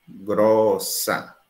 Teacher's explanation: Em grossa, você tem um O aberto.